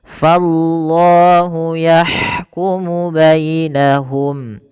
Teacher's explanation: dibaca dengan lam tafhim pada lafal lafzul jalalahnya yaitu lafal Allah. Kenapa? Karena dia ada huruf lam didahului dengan huruf fathah.